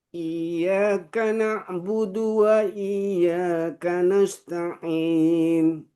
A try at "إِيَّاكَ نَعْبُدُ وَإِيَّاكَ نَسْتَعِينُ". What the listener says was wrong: tasdidnya kurang pas sedikit. Iyyaka na'budu wa iyyaka nasta'in. Hati-hati, biasanya banyak yang baca itu panjang. Padahal tidak panjang. Ada yang begitu dia panjang. Karena mungkin agak apa bahasa Jermannya ya, kagok mungkin ya bahasa Jermannya. Kagok begitu. Jangan lama. Tapi iya halus saja. Iyyaka na'budu wa iyyaka nasta'in.